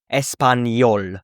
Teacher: the enye, which is basically an N and a Y put together